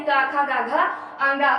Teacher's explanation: छोटा आ, बड़ा आ या का वर्ग, हा और विसर्ग का उच्चारण स्थान जो होता है वो होता है कंठ